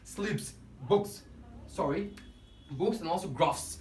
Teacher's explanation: We need to pronounce it as S, and there is no vibration in our vocal cord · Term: voiceless sound